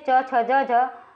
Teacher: च, छ, ज, झ स्पर्श संघर्षी कहलाती है